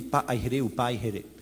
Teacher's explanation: ailleurs dans les Tuamotu, le K a disparu, et partout on dit Pa'aihere ou Pa'aihere